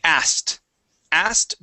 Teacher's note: jump right over that K and forget it even exists